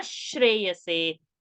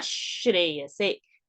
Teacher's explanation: Visarga is becoming shakara.